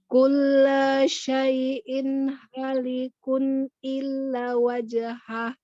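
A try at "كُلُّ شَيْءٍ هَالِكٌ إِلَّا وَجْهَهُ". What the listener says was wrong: Pertama, bukan kulla loh ini. Terus syai'in hanya panjang. Likun illa panjang. Kullu, lu-nya nggak panjang. Masih kepanjangan.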